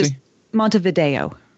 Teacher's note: the E is a long A, and that's the stressed syllable